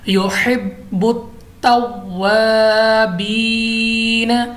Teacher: बा हमारे पास कलकला है, हमने इसलिए इसको जमाओं के साथ पढ़ा है। उसके बाद हमारे पास अलिफ मद्दा है, क्योंकि अलिफ से पहले ज़बर आ गई, अलिफ मद्दा लंबा करेंगे, और या साकिन से पहले ज़ेर है, या मद्दा भी है, तो इसलिए हमने इसको भी खींचा है।